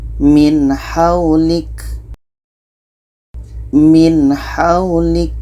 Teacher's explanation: Nun jelas, ha jelas, dan tidak ada dengung. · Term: izhar halki